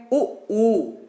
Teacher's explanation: तो जब आप उ बोलते हैं तो आपके जो होठ हैं, जो आपके क्या है होठ हैं, ये राउंड राउंड हो गए कि नहीं हो गए, आपके होठ क्या हो गए, राउंड राउंड हो गए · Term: वृत्तमुखी